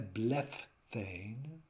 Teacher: the final stem consonant becomes aspirated, takes on an H from the theta.